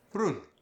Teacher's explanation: Portuguese often nasalizes the final M.